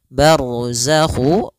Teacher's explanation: ro tebal karena ada huruf ro yang sukun didahului dengan fathah